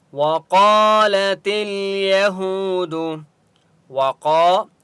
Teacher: وقالت اليهود، وقا الف مدہ ہے، قاف کو ایک الف کی مقدار کھینچ کر پڑھیں گے، اور قاف مستعلیہ میں سے اس لیے قاف کو موٹا پڑھیں گے